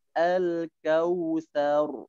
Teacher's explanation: pada kata al-kautsar, roknya coba ditebalkan